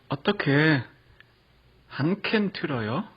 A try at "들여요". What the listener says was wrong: Nice, but I think the 들여요 it was a little bit somewhere between 들어요 and 들여요. This one, it is tricky.